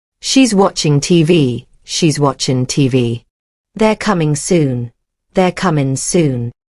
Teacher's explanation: When native speakers talk fast, they often drop am, is, and are.